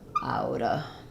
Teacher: You can just do outa, which sounds kind of like the T gets flapped.